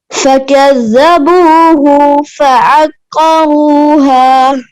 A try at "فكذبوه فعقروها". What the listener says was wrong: हो के पेश को नहीं खींचे फकज़्ज़बूहु फअक़रूहा आइन को क्लियर करें क़ाफ के साथ फकज़्ज़बूहु फअक़रूहा फ़अक़ा बड़ा क़ाफ है ها गोल हा है फकज़्ज़बूहु फअक़रूहा